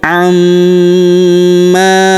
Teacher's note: Huruf ma kita tahan dan kita tekan serta kita dengungkan dua sampai 3 harakat karena terdapat tanda tasydid di atasnya.